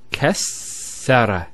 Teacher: it's very important with the shadda to give it the double sound